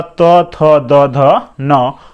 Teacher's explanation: अब आइए दंत, यानी जीभ दांत में आके सटे। यानी दंत से कौन कौन से वर्ण उच्चारण होते हैं, तो ल, दंत स, त वर्ग। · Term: दंत्य वर्ण